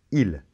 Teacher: On ne prononce pas le S de la fin.